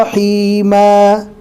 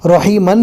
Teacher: دو زبر ہے، رکنے کی حالت میں الف مدہ بنے گا، رحیمن ہے لیکن ہمیں پڑھنا ہے رحیما رکنے کی حالت میں۔